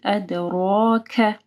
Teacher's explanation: دال کے اوپر کلکلا ہوگا اور را جو ہے نا وہ موٹی پڑی جائے گی